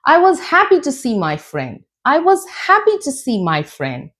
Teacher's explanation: Now, rising intonation. Rising intonation expresses your joy, your excitement.